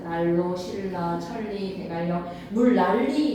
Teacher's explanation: 순행 역행 가리지 말고 니은과 리을이 만나면 릴리로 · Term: 유음화